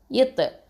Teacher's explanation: இது வந்து heavy letter, அது மட்டும் இல்லாமல் கல்கலா. ஓகே, கல்கலத்தை சுகரா கொடுக்கணும்.